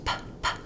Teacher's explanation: Bilabial means two pairs of lips, P, P, that I'm closing my upper and lower lip, and then it's a plosive sound or a stop sound, which means that instead of continuing like the F sound, this plosive or stop means I stop the air completely and then it explodes out.